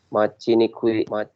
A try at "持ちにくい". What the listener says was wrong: Mochi nikui. Bukan machi tapi mochi ya.